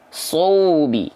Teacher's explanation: pastikan wawu sukun di sini monyong